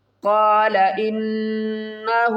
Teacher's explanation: قاف کو پر پڑھیں گے ، نون مشدد ہے، یہاں پر غنہ کریں گے، قال انہ